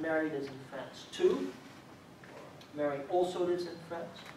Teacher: These are cases, just ordinary sentences, but for some reason here we do find a pitch accent on the additive particle instead of their associate